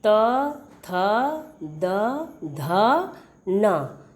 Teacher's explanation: इनके उच्चारण में जीभ दंत को स्पर्श करती है। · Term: दंत ध्वनियाँ